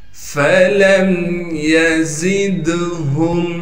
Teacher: فَلَمْ يَزِدْهُمْ، فا کو باریک کر کے پڑھیں گے، لام کو میم ساکن سے ملائیں گے بغیر غنے کے، یا کو بغیر کھینچے پڑھنا ہے، زا کو سخت کر کے ادا کریں گے اور زا کو آگے دال ساکن سے ملا دیں گے۔ دال پر قلقلہ کیا جائے گا کیونکہ دال حروف قلقلہ میں سے ہے۔